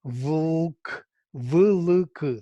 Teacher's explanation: where L is the vowel, because it creates syllable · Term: L as vowel